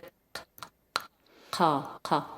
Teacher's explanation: It's at the back of your throat. Almost like a click. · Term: qaf